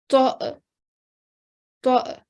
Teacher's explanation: So very light jerking sound when you're joining the ta' and the alif sakin together.